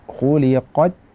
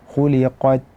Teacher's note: Kemudian kaifa khuliqat, ada huruf ta yang disukunkan, yang mana ta mempunyai sifat syiddah ataupun tertahan suara, dan juga mempunyai sifat al-hamsu, yaitu mengalir nafas.